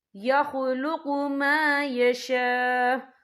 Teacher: مد متصل ہے، اس کی مقدار 4 حرکت کے برابر ہے، تو ہم اسے 4 حرکت کے برابر کھینچ کے پڑھیں گے.